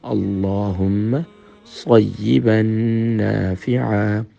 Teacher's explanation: اب ذہن میں رکھیں، صیبا پڑھ رہے ہیں، با کو جب نون سے ملا رہے ہیں تو نون مشدد ہے، تو یہاں پر ڈبل ساؤنڈ بھی ہوگا اور نون مشدد کمپلیٹ غنہ بھی ہوگا۔